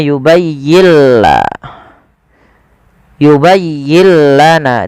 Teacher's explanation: nun sukunnya diidghamkan ke huruf lam. Maka yubayyilla. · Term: idgham bila gunnah